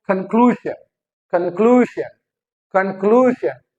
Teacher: clue पे जो है वो स्ट्रेस आ रहा है